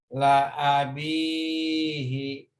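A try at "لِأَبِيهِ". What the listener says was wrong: bukan la li Pak, li abihi ya. Kebalik. Li a. Li abihi.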